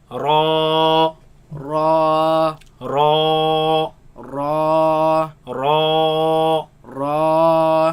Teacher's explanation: Before the ridges and between the teeth, that is called the front palate, right? Now this letter ra is all the way up on the ridges. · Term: heavy letter